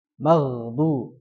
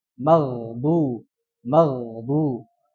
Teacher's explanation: Ya, jadi yang harusnya dibacanya rikhwah, ya kan? Ghain itu sifatnya rikhwah atau rakhwah. Itu suara yang mengalir.